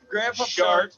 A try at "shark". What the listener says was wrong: It sounds like you're saying shart, not shark.